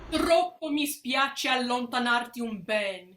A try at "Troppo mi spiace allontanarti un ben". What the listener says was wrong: Make sure that you don't double the ch in spiace, and that spiace is long.